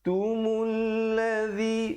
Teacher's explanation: mim baris lepas terus naik di atas lam